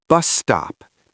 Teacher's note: Don't hiss twice. One long snake